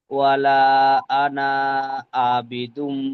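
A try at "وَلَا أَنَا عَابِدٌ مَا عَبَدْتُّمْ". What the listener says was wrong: আনা, এখানে টান হবে না, বুঝতে পেরেছেন? এই আনা যে আপনি টান দিচ্ছেন, এখানে আনা টান হবে না।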